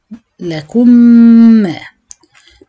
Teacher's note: فهنطقه بادغام، هطبق الادغام اكنها ميم مشددة بغنة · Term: ادغام مثلين صغير